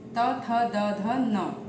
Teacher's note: दंती कहे गए हैं क्योंकि इनके उच्चारण के समय जीभ हमारे दांतों से लगती है।